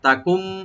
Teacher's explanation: এটার নাম হলো একলাফ, একলাফ হয়ে যাবে এখানে, মানে নুনটা মিমের সাথে চেঞ্জ হয়ে গুণা সহকারে পড়া হবে। তাকুম, এটা একসাথে পড়তে হবে।